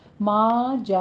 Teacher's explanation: یہاں پہ ما میں الف مدہ، جا ات میں 5 کاؤنٹ کرنے ہیں، مد متصل واجب ہے ، اور ات یہ تا پر ہمس کرنا ہے، تا ساکن